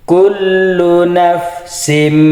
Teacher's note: Tanwinnya dimasukkan ke mim nafsim sambil didengung atau ditahan 2 harokat. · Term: idgham bi gunnah